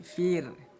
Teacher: Fir jangan dibaca tebal fir tapi fir. Tipiskan bunyi ro disebutnya ro tarkik. · Bunyi ro kita baca dengan tipis. Fir jangan dibaca tebal fir tapi fir.